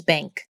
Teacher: this is an N produced with the back of the tongue instead of with the front